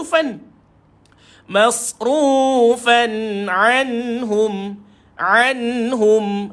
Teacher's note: izhar halqi yang kita sebut sebagai jelas bacaan yaitu tidak perlu kita dengungkan